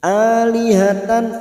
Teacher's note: fathah tanwin bertemu hamzah idhar halqi. dibaca jelas tanpa mendengung.